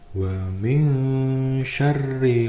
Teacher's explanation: Nun sukun bertemu dengan shin dibaca ikhfa, yaitu samar dan juga mendengung.